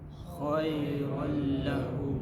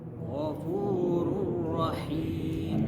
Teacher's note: Dibaca dengan jelas tanpa dengung. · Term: idgham tanpa dengung